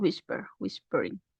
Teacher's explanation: whisper también tiene dos sílabas pero justamente no es la última sílaba la que tiene la fuerza de entonación sino la primera entonces ahí yo no estoy duplicando la última sílaba como en